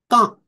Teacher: which is a long vowel with a short anuswara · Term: antar gomukha